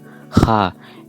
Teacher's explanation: Ha, a voiceless velar fricative, creating a scratchy resonance